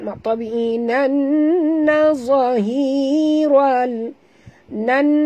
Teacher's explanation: di atas nun ada tasydid, wajib dengung dua harakat